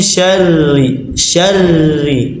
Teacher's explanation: Adapun ketika ro kasrah ditipis